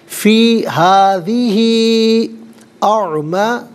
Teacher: یہ مد منفصل ہے، مد جائز بھی کہتے ہیں۔ منیمم اس کو 3 سے 4 حرکات کی مقدار کھینچ کر پڑھنا چاہیے، میگزیمم اس کو 5 سے 6 حرکات کی مقدار کھینچ کر پڑھ سکتے ہیں۔